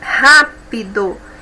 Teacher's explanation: Ra é a sílaba mais forte, é a antepenúltima. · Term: proparoxítona